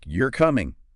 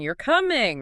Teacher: rising tone at the end. Suddenly it's a question. Same words different tune.